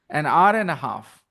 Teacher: H is silent, it starts with a vowel sound